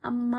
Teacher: ಗಾಯ ಆದಾಗ ನಾವು ಪಟ್ಟಣ ಅಮ್ಮ ಅಂತ ಚೀರ್ತೀವಿ ನೋಡ್ರಿ ಅಮ್ಮ ಅಂತ ಎಳಿತೀವಿ ಎರಡು ಮಾತ್ರೆ ಕಾಲಕ್ಕಿಂತ ಜಾಸ್ತಿಯಾಗಿ ಎಳಿತೀವಿ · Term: ಪ್ಲುತ್ ಸ್ವರ